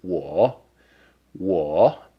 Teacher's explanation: we know it's a third tone